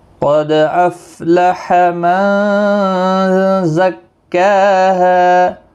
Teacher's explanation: قد قاف مستعلیہ ہے، دال ساکن پر قلقلہ ہوگا، باقی کسی بھی حرکت والے حرف کو کھینچنا نہیں۔